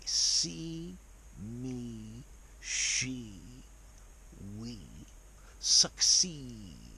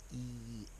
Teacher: Now, if you want to sound posh, normally words that end with this E go wee. So, it's almost like there's a schwa after the E sound. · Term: long E